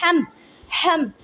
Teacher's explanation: ہا کو حلق کے درمیان والے حصے سے ادا کرتے ہیں۔ ہا کو میم ساکن کے ساتھ ملائیں۔